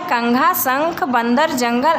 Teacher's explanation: अनुस्वार का उच्चारण करते समय ध्वनि केवल नाक से निकलती है